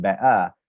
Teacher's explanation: if I were to say better without the t as in better then that would be a glottal stop